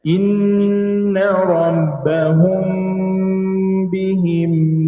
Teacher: Ada yang baca dengan itbaq, yakni dengan merapatkan dua bibir, menutup dua bibir.